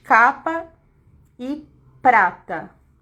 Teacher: a letra P, ela é oclusiva, bilabial, desvozeada. Aí, eu coloquei dois exemplos aqui na frente, capa e prata.